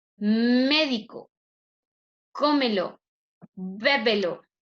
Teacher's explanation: Estrújula tiene la mayor fuerza de voz en la antepenúltima sílaba.